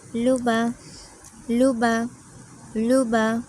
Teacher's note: লিসু লিসু লাম পেশ লু বা জবর বা লুবা লুবা লুবা পেশ উচ্চারণে সাধারণত আমাদের একটু ঠোটটা গোল হয়ে যায়